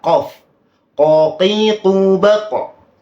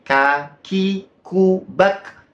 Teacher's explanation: itu memiliki sifat istilla arti dari istilla itu Alul wa irtifa maksudnya tinggi dan terangkat maksudnya pangkal lidah itu diangkat makanya tebal ya